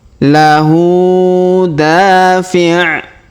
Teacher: Huruf hu kita panjangkan 2 harokat karena terdapat harokat U terbalik ya di atasnya.